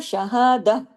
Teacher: ये हा की आवाज गले से नहीं होती। ये आवाज सीने की तरफ जाती है। जिस तरह आें भरने वाला हा होता है। · اگر ہم تا مربوطہ پہ رکتے ہیں تو یہ تا تا نہیں رہتی، ہاں میں بدل جاتی ہے